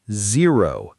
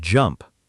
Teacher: Some learners accidentally pronounce the Z closer to a J sound. Remember, Z is a buzzing sound made with your teeth close together and your voice vibrating. Completely different from the J in jump.